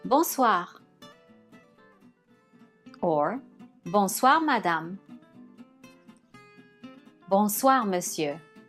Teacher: The OI syllable is pronounced as wa.